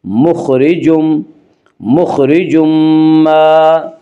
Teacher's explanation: را کے نیچے زیر ہے اس لیے را کو باریک پڑھیں گے